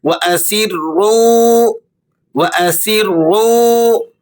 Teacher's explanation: واو ساکنہ ہے اور را پر پیش ہے، تو یہ واو مدہ کہلاتا ہے۔ اس کو آپ نے 1-2 سیکنڈ تک کھینچ کر پڑھنا ہے